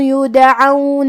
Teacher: کلمت یدعون میں بھی دال کو ہمیں ہلا کے پڑھنا ہے. حرف العین پہ زبر ہے تو ہم زبر کو ظاہر کریں گے.